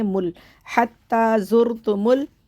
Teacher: ہم میم کو لام سے ملا کر ایک دفعہ پڑھیں گے